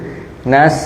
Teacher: Nas bertemu dengan sin yang dia memiliki desis. Nas, jadi sifatnya ditunaikan terlebih dahulu.